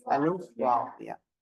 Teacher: மத்துடைய எழுத்துக்களின் பிறப்பிடம் வாயின் உள்காலியான நடுப்பகுதியாகும் வாயினுடைய உள் காலியான நடுப்பகுதியிலிருந்து மத்துடைய எழுத்தான அலிஃப் வாவ் யா உச்சரிக்கப்படுகிறது சரிங்களா